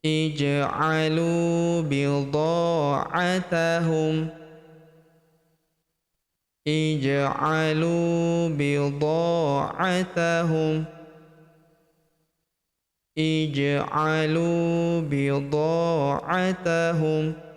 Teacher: huruf dha kita panjangkan 2 harokat karena terdapat tanda alif di depannya